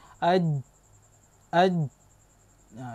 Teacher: Jim ini sifatnya syiddah, kuat, syiddah kuat. Aj, dia tertahan, dia tertahan